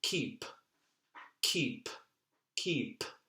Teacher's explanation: And if you don't feel a little puff of air when you say keep, keep, keep, keep, if you don't feel that puff of air, then you're probably not doing enough to enunciate that particular consonant.